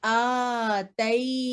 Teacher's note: یہ الف کے اوپر آ رہا ہے فتح شبائیہ، اس لیے اس کو 2 سیکنڈ لمبا کر کے پڑھیں